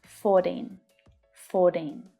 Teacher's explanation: And the T can sound like a flap T. D sound.